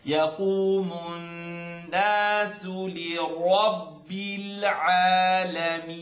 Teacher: When you hold your nose, the sound gets trapped. So it's coming through your nose, the noon shadda.